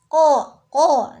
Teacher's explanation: bunyinya keluar dari pangkal lidah dekat dengan kerongkongan yang dihimpitkan ke langit-langit mulut bagian belakang